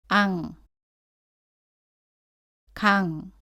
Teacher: 이때 이응은 응 소리가 납니다. 혀의 뒷부분으로 입천장 뒷부분을 막고 공기를 코로 보내서 소리 냅니다. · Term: 받침소리 이응